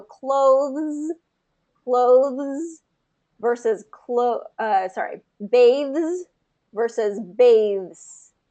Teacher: you want to pull that voicing all the way through · TH sound and then the Z sound. So both of those are voiced. So what you want to do is, because the ending, we don't want it to kind of get devoiced or voiceless at the end, you just kind of have to hold that voicing out. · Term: voiced ending, voiced consonant